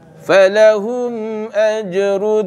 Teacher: Mim mati yang bertemu dengan Hamzah maka dia dibaca jelas tanpa dengung. Ya. Dia tak boleh dengunglah mim mati dengan Hamzah.